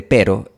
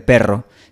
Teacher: En la pronunciación estándar del español, la /ɾ/ de pero y la /r/ de perro se realizan cuando la lengua golpea los alvéolos una o más veces. Los alvéolos son la parte dura detrás de los dientes de arriba.